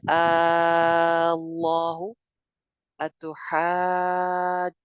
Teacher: हा जबर अलिफ हा, एक अलिफ मद्दा, आगे जीम पे शद है तो हा के ऊपर मद आ गई